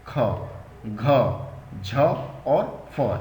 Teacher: जब आप उच्चारण करेंगे तो मुंह से हवा सी निकलेगी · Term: महाप्राण